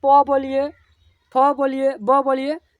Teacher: ब बोलिए दोनों का जो ओस्ट है ना दोनों ओस्ट यानी होट चिपकता है चिपकता है छोड़ता है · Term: प वर्ग